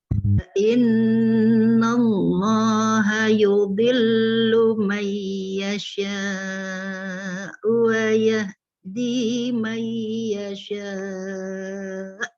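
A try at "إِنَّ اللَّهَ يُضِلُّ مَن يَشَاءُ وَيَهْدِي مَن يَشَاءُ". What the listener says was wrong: Panjangnya sih oke. Wayah di yahnya hanya nggak ada hembusannya, nggak rohwah. Jadi hembusnya cuma wayah di. Nah ini nggak rohwah deh.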